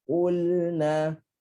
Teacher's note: dia ada lepasan suara, mesti ada lepasan suara tapi pendek je.